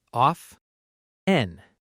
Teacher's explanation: Some learners pronounce the t clearly. Of 10, but a lot of native speakers say often with a silent t.